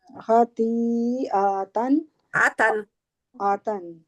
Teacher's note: आ को और लंबा नहीं करना, आ के आगे अलिफ नहीं है।